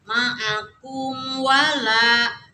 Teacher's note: Kemudian mim mati menghadapi wawu. Idhar syafawi, tidak boleh didengung tapi harus jelas, tidak boleh loncat.